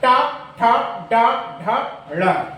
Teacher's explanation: जिह्वा की जो हमारा जो नोक है वो बिल्कुल बीच में, जहाँ मुलायम वाला हिस्सा है वहां पर स्पर्श करेगी तो वह मूर्धा स्थान कहलाता है।